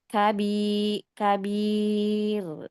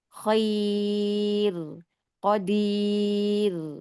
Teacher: Kabi Kabir nah ini tipis ini karena sebelumnya Ya Sukun nih yang terakhir ro sukun yang dibaca tipis sebabnya karena ro sukun karena waqaf yang didahului oleh Ya Sukun